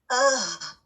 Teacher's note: ہاں کی ادائیگی کے دوران سانس جاری رہتا ہے اور حلق کے آخری حصے سے ادا ہوتا ہے, مڈل آف تھروٹ سے نہیں ہوتا.